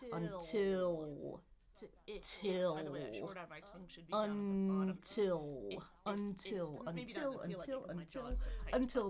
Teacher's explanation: is until until I've got my uh I've got my NT combination because there's a vowel mix. I'm going to really release that T.